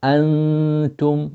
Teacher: Antum, ikhfa, or keeping the noon or the sound of the noon elongated